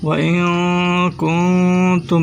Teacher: نون ساکن ہے، آواز کو ناک میں لے جا کر غنہ کریں، اخفا کریں، اس کو اخفا کہتے ہیں